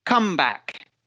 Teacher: in a phrasal noun we are emphasizing or putting stress on the first part of the word